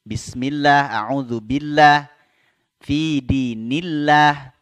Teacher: Nah, ini lafaz Allah didahului baris kasrah. Ya, lafzul jalalah tarqiq. Dibaca tipis. Bismillah, a'udzubillah, fi dinillah, tipis.